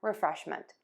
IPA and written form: rəˈfrɛʃmənt (REFRESHMENT)